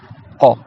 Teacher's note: Il faut que tu ailles encore plus loin que le ga, vraiment au fond là, presque à l'entrée de la gorge. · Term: le qaf